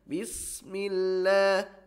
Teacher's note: Dan kemudian ini tipis, ya, tipis. Huruf sin tipis. Dia memiliki sifat sofir, ya, atau desis, ya, menyerupai desis burung